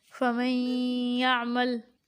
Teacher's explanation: ادغام یا کی مثالیں: فَمَن يَعْمَلْ۔ فَمَن يَعْمَلْ میں نون ساکن کے بعد یا حرف یرملون میں سے ہے تو نون ساکن اور تنوین کو غنہ کے ساتھ ہم پڑھ رہے ہیں